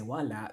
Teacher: Wala, that means nothing, but wala, there's actually no stress on the last. The stress is on the first, so watch that. And there is no glottal stop.